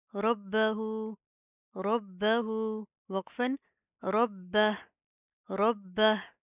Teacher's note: ہا کے اوپر جزم آئے گی, پھر ہم جسٹ ہا کی آواز کو واضح کریں گے